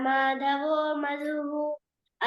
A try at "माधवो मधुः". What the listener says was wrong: उत्तमं there please stress on the Mahaprana a little bit madhavo madhuhu